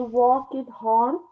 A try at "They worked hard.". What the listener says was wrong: They worked hard. Worked hard. It's not two syllables, it's one syllable. They worked hard.